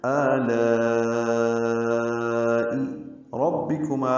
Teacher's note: ربکما میں را کو پر پڑھیں گے، با سے ملائیں گے، را کی زبر کی وجہ سے را کو پر پڑھ رہے ہیں